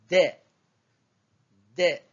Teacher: Donc, la 8e lettre de l'alphabet D se prononce au niveau de la pointe de la langue qui vient se fixer à l'avant du palais pour toucher légèrement les incisives supérieures à l'intérieur de la bouche.